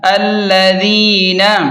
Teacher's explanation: ذال کو نرمی سے پڑھیں اور یا مدہ کو تھوڑا سا کھینچ کر پڑھیں